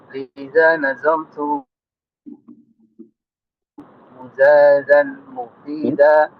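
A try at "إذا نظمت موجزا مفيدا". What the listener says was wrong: Mimnya panjang. Itu mujazan. Mujazan.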